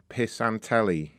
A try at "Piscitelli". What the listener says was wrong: No. Piscitelli. Where do you get the on from? P-I-S-C-I-T. Piscit. E-L-L-I, Piscatelli. There's no O.